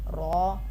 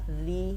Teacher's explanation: را کے اوپر جب زبر ہوگی ہم اس کو پوری یعنی موٹا پڑھیں گے، اور جب اس کے نیچے زیر ہوگی پھر ہم اس کو باریک پڑھیں گے